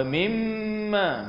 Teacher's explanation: mim yang bersabdu. Wajib al-ghunnah, wajib dengung dua harakat.